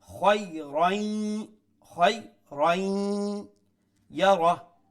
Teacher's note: Ra has a tanween, after tanween is letter ya, so we will incorporate the tanween into the ya, which is known in the term of tajweed as idgham, and this idgham is with ghunna